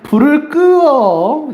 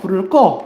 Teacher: 모음 탈락은 용언의 어간 끝소리 으가요. 이 으가요. 모음으로 시작하는 어미 앞에서 탈락하는 겁니다. 모음으로 시작하는 어미 앞에서 탈락하는 점.